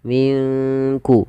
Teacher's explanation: cara membacanya samarkan nunnya kepada huruf Kaf minkku langsung kepada makhraj huruf Kaf Min kulli fakihah P falfa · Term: bacaan Ikhfa